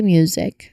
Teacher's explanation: the M sound, which is made with your lips closed and sound coming through your nose, quickly followed by the Y sound, which is music. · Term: my cluster